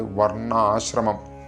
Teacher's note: ഇവിടെ വർ കഴിഞ്ഞിട്ട് ണ ദിത്വമായിട്ടാണ് ഉച്ചരിക്കേണ്ടത്. വർണ്ണാശ്രമം അങ്ങനെ തന്നെ ഉച്ചരിക്കുക.